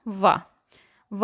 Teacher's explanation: वा वर्ण का उच्चारण स्थान है दंतोष्ठ